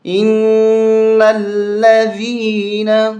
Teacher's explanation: نون مشدد ہے، ہمیشہ غنہ ہوتا ہے